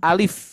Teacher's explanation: Nah untuk Alif itu dibaca satu harkat cukup